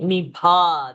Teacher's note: That bha we have to expel very nicely to get Mahaprana.